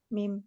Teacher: Keluar dari kedua bibir yang dirapatkan disertai dengan ghunah.